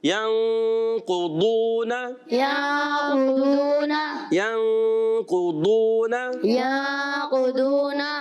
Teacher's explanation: ضاد ادا ہوتا ہے زبان کا بغلی کنارہ یعنی زبان کی کروٹ اور اوپر کی داڑوں کی جڑوں سے